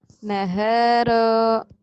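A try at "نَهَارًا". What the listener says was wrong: hanya panjang. Rohnya pendek. Nggak ada jeda, jangan ada jeda, jangan ada antara. Nahara gitu ya. Nahara.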